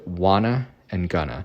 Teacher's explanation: the phrase want to and going to in English are often reduced to Wana and Gunna in normal casual speech